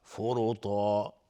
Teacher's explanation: فرطا را مفخم هست چون ضمه داره